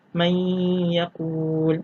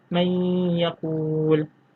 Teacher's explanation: Kerana sebab apa dia dinamakan idgham naqis? Kerana dia masih meninggalkan sedikit kesan huruf nun mati, iaitu kita mengeluarkan sedikit suara dari rongga hidung.